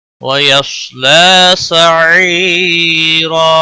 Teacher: लाम के ऊपर खड़ी जबर है, एक अलिफ के बराबर खींच कर पढ़ेंगे · फसौफ यदउ सुबूरा वयस्ला सईरा। वयस्साद हुरूफ मुस्तालिया में से है, पुर पढ़ा जाएगा, इसको हिलाना नहीं